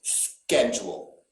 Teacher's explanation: in the united states though nobody will say schedule we are going to pronounce that ch as a hard k sound